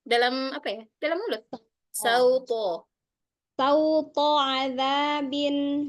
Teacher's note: To-nya jangan masuk hidung ya.